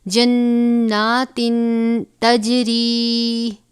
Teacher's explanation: لاہم پڑھ دیں گے، انا لہم جناتن، نون مشدد غنہ ہوگا، تنوین کے بعد حرف اخفا میں سے تا ہے اخفا کریں گے